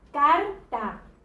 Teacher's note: reconozco que la sílaba tónica es car, es decir, la que suena con mayor intensidad, por el sonido de esa sílaba, ¿sí? No hay un signo gráfico que a mí me permita reconocer que car es donde está el acento, la sílaba tónica.